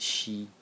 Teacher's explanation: the first character in the series is pronounced she in the first tone, and it means pity or regret.